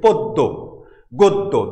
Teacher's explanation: দ দুইবার উচ্চারণ হচ্ছে, দ দুইবার উচ্চারণ হচ্ছে। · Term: দ্বিত্ব